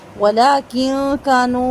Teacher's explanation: ولیکن کانو، ولیکن میں نون ساکن کے بعد کاف ہے، باریک اخفا کریں گے، نون واو زب پیش نو جو ہے یہاں پر مد ہے، مد جائز منفصل، چار حرکت تک مد کو کھینچ کر پڑھیں گے، یعنی کہ نون واپس نو کو چار حرکت کھینچ کر پڑھیں گے۔